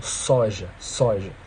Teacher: você não sente a língua encostar de fato nos alvéolos mas a língua a ponta dos alvéolos ela se direciona para